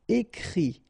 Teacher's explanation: Okay, and then the IT, phonetically you pronounce I because final T is not pronounced